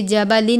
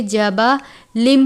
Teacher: جبل منہن، جبلم تنوین ہے، اس کے بعد میم مشدد ہے، تنوین کو میم مشدد سے ملا کر غنہ کر کے پڑھیں گے ، جبلن نہیں پڑھیں گے بلکہ جبلم پڑھیں گے، یعنی میم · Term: میم کی آواز